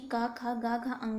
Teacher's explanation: जब भी हम कवर्ग को बोलते हैं, मतलब कि का, खा, गा, घा, अंगा को बोलते हैं, तो जीभ का जो पिछला भाग होता है वो तालु को स्पर्श करता है।